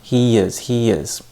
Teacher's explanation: these are actually a vowel and vowel sound combination. And in this case, we would link them with a Y or a W sound. So in this case, it's a Y sound.